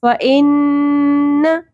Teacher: ان نون مشدد کے اوپر غنہ ہوگا، آواز کو ناک میں ٹھہرائیں گے، ٹھیک ہے، لیکن نون کی زبر کو ہم نے شارٹ رکھنا ہے، نہ کھینچنا نہیں ہے، نون کی ساؤنڈ کو کھینچنا ہے، زبر کو نہیں کھینچنا.